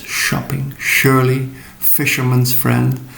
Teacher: the sure sound with rounded lips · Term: sh sound